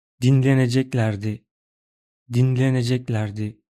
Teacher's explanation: See, miraculously my lips didn't move, and there was only one voice tone. Only thin sounds. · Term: vowel harmony